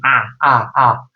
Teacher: ayın sesi hafif gırtlaktan bir ses çıkartır